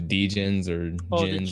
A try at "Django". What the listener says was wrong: the Ginny. The D is silent, like Django. Yeah, Ginny.